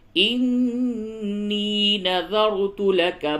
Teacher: اذ قالت امرأة عمران ربی انی نذرت لک، را کو پر کریں گے. انی، نون مشدد ہے، غنہ کیجئے اور یا کو تھوڑا سا کھینچئے